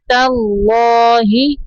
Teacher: تا کو باریک پڑھیں گے اور تا کو لام کے اندر ملانا ہے